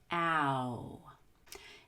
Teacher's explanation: third low high vowel the long o u as in ow it starts with the short a which is the low front vowel and then it ends with a long you a high back vowel